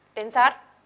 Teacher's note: puede recaer en la última sílaba como en la palabra pensar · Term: acento